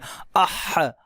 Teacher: اح حلق میں جا کر کے آواز رک رہی ہے